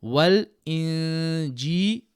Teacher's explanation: Now on the noon sakin here we do ikhfa, so 2 beats of gunna